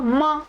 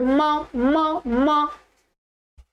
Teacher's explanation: तो ओठ भी आएंगे और नासिका भी आएगी